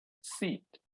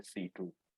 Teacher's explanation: most of us who are Telugu speakers would possibly add oo after t